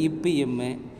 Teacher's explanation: மேல் இதழும் கீழ் இதழும் பொருந்ததால் பிறக்கும் எழுத்துக்கள்